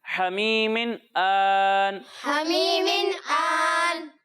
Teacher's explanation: ہا کو حلق کے درمیان حصے سے ادا کرنا ہے